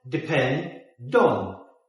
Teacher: So the D from depend goes to on.